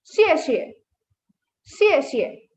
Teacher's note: you can see it has the fourth tone, so your pitch just falls